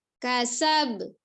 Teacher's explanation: dibaca jelas qalqalahnya tetapi dengan tidak berjedah. · hanya membentuk makharijul huruf ba, kemudian dinormalkan karena dia sukun